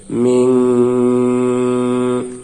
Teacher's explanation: নুন সাকিনের বামে ইকফা হরফ শিন আসছে, তাই ইকফা মানে অস্পষ্ট গুন্নাহ করে পড়তে হবে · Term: ইকফার গুন্নাহ